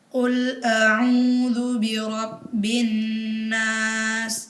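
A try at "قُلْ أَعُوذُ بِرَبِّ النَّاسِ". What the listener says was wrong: Ya, dilamakan lagi bin nas.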